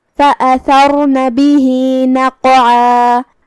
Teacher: ہم قاف کو ہلاتے ہوئے یہ کلمہ کو ادا کریں گے کیونکہ قاف ساکن حروف القلقلہ میں سے ہے. پھر یہاں حرف العین ہے، عین کی ادائیگی حلق کے درمیان والے حصے سے ہے، ہم یہ کلمے پہ رکیں گے تو مد الف سے رکیں گے. · کلمت فوسطن میں یہاں حرف السین ہے. دھیان رہے سین حروف الترقیق میں سے ہے. ہم اسے بھاری آواز میں نہیں ادا کریں گے، تفخیم سے نہیں. جو کہ اس کے بعد حرف الطا ہے، طا حروف التفخیم میں سے ہے، ہم اسے بھاری آواز میں ادا کریں گے.